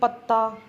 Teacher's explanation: ਪੋਠੋਹਾਰੀ ਦੇ ਵਿਚ ਅੱਧਕ ਲਾ ਕੇ ਦੋਹਰਾ ਅੱਖਰ ਬੋਲਣ ਦੀ ਬਹੁਤ ਜਿਆਦਾ ਰੁਚੀ ਆ